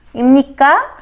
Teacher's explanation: Imnika eshitilyapsiz, oxirida ohang ko'tarilyapti.